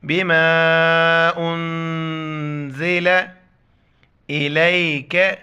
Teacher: نون جو ہے نا جزم ہے، اس پر بھی اخفا کریں گے، آواز کو ناک میں چھپائیں گے